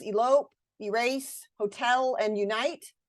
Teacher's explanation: we don't always stress the first syllable in the words elope, erase, hotel, and unite. Those have second syllable stress.